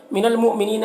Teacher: यहाँ पर हमज़ा साकिना है, झटका लगेगा।